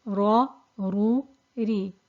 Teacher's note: the ra with a fatha and the ra with a dhamma is thick, and the ra with the kasra is thin.